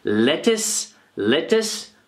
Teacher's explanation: with the stress at the beginning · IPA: /ˈlɛtis/